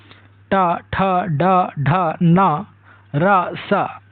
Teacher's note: अगला जो व्यंजन है वह है मूर्धन्य व्यंजन, यानी मुख की ऊपरी छत के अगले कठोर भाग यानी मूर्धा मसूड़े और तालु के बीच का हिस्सा कहते हैं। जब जीभ की उल्टी हुई नोक मूर्धा को स्पर्श करती है तब इन व्यंजनों का उच्चारण होता है।